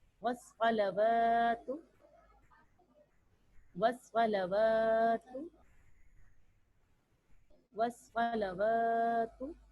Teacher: موٹا ادا کریں, مستعلیہ حروف ہے, صاد پڑھنا ہے, سین کی ادائیگی نہیں ہونی چاہیے.